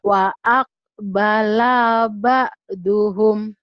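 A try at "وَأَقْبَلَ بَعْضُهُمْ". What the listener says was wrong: Lanya panjang nggak ya Bu ya? Kenapa Ibu baca panjang? Wa aqbala ba'duhum.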